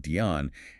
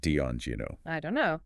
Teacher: the vowel sound in don't might reduce towards a schwa in very fast speech, making it sound like Dion, and no might stay relatively clear, or also get reduced a bit.